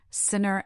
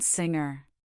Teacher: The N in sinner is alveolar, while the NG in singer is velar.